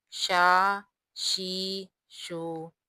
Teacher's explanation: شین کا مخرج درمیانے زبان اور درمیانے تالو، یہاں سے شین ادا ہوگا، شین زبر شا، شین کی ادائیگی میں تفشی کی سی آواز پیدا ہوتی ہے، شین زبر شا، شین زیر شی، شین پیش شو، شا شی شو۔